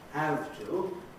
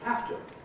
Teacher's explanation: lot of people say uh words like have to and again assimilating the v at the end of have to